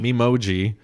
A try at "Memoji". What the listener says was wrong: You can't say Memoji like it's mimosa. Mimosa.